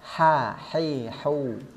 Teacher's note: dia bersifat hams artinya nafasnya keluar ada nafas yang keluar Kemudian dari segi suara dia bersifat rakhawa tidak ada tekanan tekanannya sangat minim bahkan terkesan seperti mengalir begitu saja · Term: rakhawah